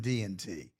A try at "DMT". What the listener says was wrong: DMT, right? DMT, yes, it's an M, like I getting married,